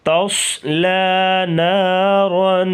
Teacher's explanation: تصلی، تا کو باریک اور صاد کو پر پڑھیں گے، لام کو باریک پڑھیں گے